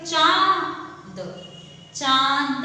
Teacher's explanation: जब हम चंद्र बिंदु की मात्रा का उच्चारण करते हैं तब हमारे मुंह व नाक दोनों से ध्वनि आ रही होती है। जैसे कि आ, तो नाक और मुंह दोनों से ध्वनि आ रही है, इसलिए इसे अनुसांसिक कहा जाता है। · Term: अनुनासिक